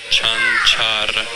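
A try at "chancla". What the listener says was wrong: You got to roll the tongue. Chancha. Chanchara.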